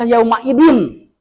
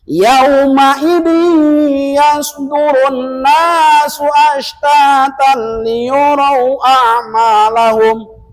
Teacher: Apanya masukkan tanwinnya masukkan kepada iya. Seolah-olah tidak ada bunyi n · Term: idgham biguna